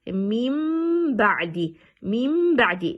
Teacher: So you're going to change noon to meme, to the articulation point of meme. Instead of reading noon, you're going to read meme, and the reading is going to be like this. · It means you're completely going to ignore noon and reading meme, and you stretch on meme, holding it for 2 seconds · Iqlab in Arabic, in English we're going to say changing letter noon to meme. So we're not going to read noon, instead we're changing noon into meme. We say meme ba'd, and we stretch meme for 2 seconds.